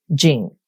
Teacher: it's actually a character for peace or quiet and it's a fourth tone or it's a down tone